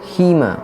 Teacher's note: Dan yang terakhir merupakan hima, merupakan mat arid lis sukun karena ya sukun didahului oleh huruf berharokat kasroh dan berada di akhir kalimat. Huruf ha kasroh dibaca panjang selama 2 sampai 6 harokat